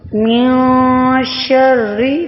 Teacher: نون کو پڑھیں گے نہیں بلکہ چھپا لیں گے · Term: اخفا